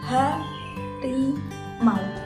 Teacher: bunyi U yang berada pada akhir kata hilang atau bahkan berubah menjadi bunyi W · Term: realisasi fonem